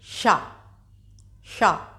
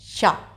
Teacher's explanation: तो हालांकि इनकी ध्वनि एक होती है, शा, सा की, लेकिन इनका उच्चारण स्थान फर्क होता है। तो शा का उच्चारण स्थान हो गया तालु। आप उच्चारण करके देख लीजिए, वहीं से जहाँ से चा, छा, जा, झा का आप उच्चारण करते हैं वहीं से इस शा का आपको उच्चारण करना है, शा।